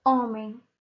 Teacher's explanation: A palavra homem se inicia com a letra H, mas eu não consigo ouvir o som da letra H, portanto, eu não vou contá-la como um fonema, tá ok?